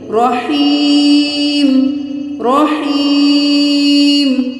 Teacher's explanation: یا مدہ ہے، ایک الف کے برابر کھینچیں گے